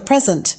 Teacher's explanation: the present is pronounced with the stress on the first syllable